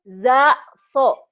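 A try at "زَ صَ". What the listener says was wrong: Rapuh banget. Kalau ini kan keras, da. Ini da, ini rapuh banget. Zaitun, Zainab. Kalau suara suara madu tawonnya. So. Bukan. Za.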